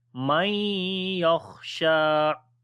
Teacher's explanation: After the noon sakin the next is ya, we make idgham with gunna. On the kha we read heavy sound, and also we make hums quality, and shin we long due to standing fatha, man yakhsha.